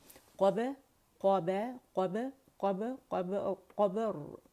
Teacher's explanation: تو با کے اوپر زبر نہیں لگائیں گے، قب آئے گا قلقلہ کریں گے، قاف موٹا ہے اور را کو ساکن کریں گے